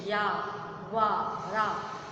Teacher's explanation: उसके बाद आपका आता है अंतःस्थ व्यंजन। इन वर्णों के उच्चारण में जो जीभ होती है वो पूरी तरह से मुख के किसी भाग को नहीं छूती, उन्हें अंतःस्थ व्यंजन कहते हैं।